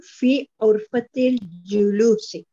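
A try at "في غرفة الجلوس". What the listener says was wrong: Dear, this word is not urfati, not with ayn. This word is with ghain. Fi urfatil julusi.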